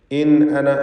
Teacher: സാക്കിൻ നൂനിനെ ഇൽഹാർ ഹൽഖി നൽകി മണിക്കാതെ വെളിവാക്കുക